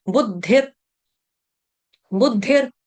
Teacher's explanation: नो, बुद्धि, बुद्धि word आपके लिए कॉमन है, बुद्धि, बुद्धि जैसे बोलते हैं, बुद्धि बोला, उसके बाद है विसर्ग, विसर्ग का उच्चारण करेंगे हलंत र की तरह। बुद्धिर, बुद्धिर हरंत ल, यानी कि आधा र, पूरा र का उच्चारण नहीं करेंगे, बुद्धिर ऐसे कोई नहीं गाएगा।